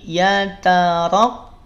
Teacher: Tapi yataraqqab. Ra-nya tebal. Ya, ra-nya tebal.